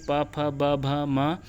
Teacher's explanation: प जो है प वर्ग का प, फ, ब, भ, ये इसका अगर उच्चारण करेंगे प, फ, ब, भ, म, तो इसमें ओष्ठ जो है वो उसका स्पर्श होता है, ओष्ठ से उच्चारण होता है